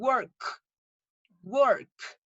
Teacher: Y digan work, work. Cuando ustedes pronuncian la K, deja de vibrar la garganta. Entonces no tiene voz. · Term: sin voz